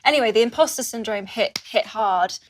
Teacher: uses a glottal stop to connect the word hit to the word hard